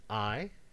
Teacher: the word I has the diphthong I in it, and it doesn't have any consonants either before or after it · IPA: [aɪ]